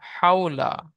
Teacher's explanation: ওয়াও লিনকে নরম আওয়াজে তাড়াতাড়ি পড়তে হবে, টান দেওয়া নিষেধ। যেমন হাউলা।